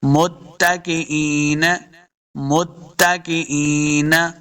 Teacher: علی سرور موضونہ، علی سرور موضونہ، متکئین، متکئین، کاف کو موٹا نہیں کریں گے، حمزہ زیجا ای، یا مدہ اس کو 2 حرکات لمع کر کے پڑھیں گے